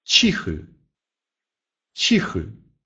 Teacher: произносится мягко, еще чуть-чуть даже мягче, чем в русском языке «ч» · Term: мягкий Ч